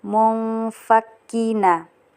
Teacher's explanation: nun sukun bertemu dengan fa, jadi dibaca samar dengan dengung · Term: ikhfa